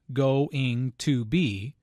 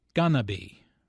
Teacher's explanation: Notice how this is pronounced like gonna be. Instead of 4 syllables, going to be, there are 3 syllables, gonna be.